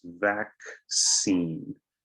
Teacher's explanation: It's interesting that the 2 C's make different sounds, K and a S.